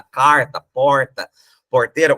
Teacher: o paraguaio tem o r retroflexo que é esse R nosso da carta porta Porteira